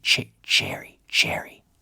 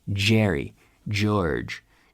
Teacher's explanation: una vez que activo las cuerdas vocales, tenemos la J. O la G.